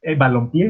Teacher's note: ya es una palabra aguda porque la entonación se la damos en la última sílaba y además eh, termina en vocal, ¿no?